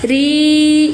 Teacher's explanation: Ri ya turun lidah. Pangkal lidah turun tarkik atau tipis. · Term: tipis atau tarkik